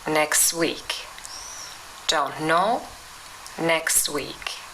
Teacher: we drop the final consonant and it becomes next week